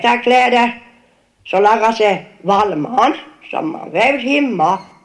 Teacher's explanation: sentence intonation, phrase final, fall and rise, is located quite regularly on the second peak of these accent 2 words, right? But since intonation contours are normally positioned with respect to stressed syllables, this suggests that accent 2 words have 2 stresses.